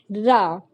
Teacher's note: प्रकंपी व्यंजन जिसको बोलने से थोड़ा सा कंपन होता है